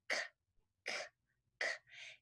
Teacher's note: The K is made with the back of your tongue going up, way in the back. K, k, k. And your voice stays off for this one, like a bird going ka, ka, ka.